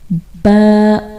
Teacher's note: اس کو کیسے پڑھتے ہیں کہ ہونٹوں کے اندرونی گیلے حصوں کو آپس میں مکمل ملاتے ہوئے باریک آواز میں پڑھتے ہیں